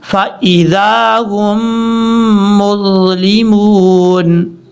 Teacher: ہا کو جب شد والی میم کے ساتھ ملائیں گے تو یہاں پہ غنہ بھی کیا جائے گا